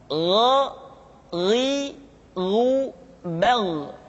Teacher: diucapkan seperti kita mengucapkan huruf Kha yaitu diucapkan dari pangkal tenggorokan kita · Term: huruf g